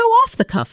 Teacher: how off the cuff carries three quick, evenly stressed beats